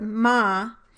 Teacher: my lips are first pressed together and the velum is lowered for the production of the phoneme at the start of the word. Then I must lower my jaw and raise the velum for the production of the phoneme at the end of the word.